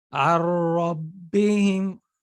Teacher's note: See, I didn't spend time with ghunna. I didn't make ghunna with my nose, and I didn't spend time on it. I just made the shadda and kept moving. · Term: merging but without ghunna